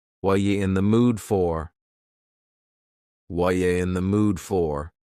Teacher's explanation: What are you in the mood for? The word are is gone, and the word you has been reduced to ya. So when we link together, what and you, super fast.